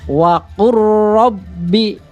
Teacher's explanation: Jadi jangan membacanya waqul rabbi a'udzubika, salah ya. Jadi lam itu sudah dilebur sama huruf ro. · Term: idgham mutaqarribain